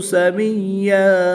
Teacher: دو زبر کی تنوین کو وقف کی حالت میں الف مدہ سے تبدیل کر کے پڑھیں گے